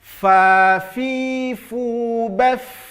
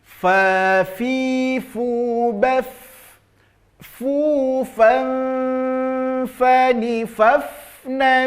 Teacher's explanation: Fa, tidak, tapi ujung gigi seri atas tempelkan ke bibir bawah, fa. Maka jelas nanti tampak sifat hamas, mengalir nafas ketika membunyikan huruf fa.